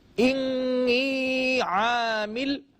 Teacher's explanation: جب نون پر تشدید ہوا کرتی ہے تو پھر ہم اس پر غنہ کرتے ہیں، یعنی نیزل ساؤنڈ کو ہم قدر زیادہ نمایاں کر دیتے ہیں، جس کی وجہ سے صحیح ادائیگی حاصل ہو جاتی ہے۔